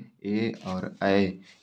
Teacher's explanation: ये जो हो जाएगा ए ऐ, तो कहता है ए ऐ कंठ तालव्य एदैतो कंठ तालु। तो कंठ और तालु के योग से बेटा बनते हैं, इसीलिए कहते हैं कंठ तालव्य